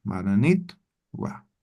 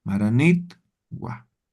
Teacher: en vez de decir ta, solamente pronunciamos la T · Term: Elisión vocálica